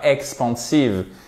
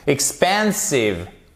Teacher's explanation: le E se prononce comme un I court